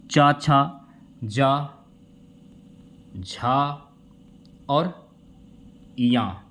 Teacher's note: तो तालु से जैसे कि चा, छा हो गया, चा, छा, जा, झा और या, ये तालु से बोले जाने वाले वर्ड हैं